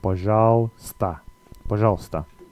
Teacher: Most Russian words, you can pretty much guess exactly how it's said by how it's spelt. But in the case of пожалуйста, the uy sound gets dropped here